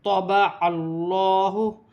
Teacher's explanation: حمزہ کے نیچے زیر کی حرکت ہے، لام مشدد ہے، لام کو کاف کی حرکت کے ساتھ ملا کر پڑھا جائے گا، یا ساکن سے پہلے زیر یا مدہ بن رہی ہے، 1 الف کی مقدار کھینچ کر پڑھا جائے گا۔ طبع اللہ، اللہ کی لام سے پہلے زبر آ رہی ہے، اللہ کی لام موٹی بھی پڑھی جائے گی